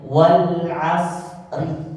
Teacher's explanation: kalau kita membaca tidak diwakaf maka bacanya Wal Asri tipis ya rinya karena tidak ada efek yang saya katakan tadi ketika dia berharakat